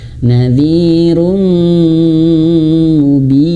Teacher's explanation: ada mim bertasydid, maka ditahan 3 harokat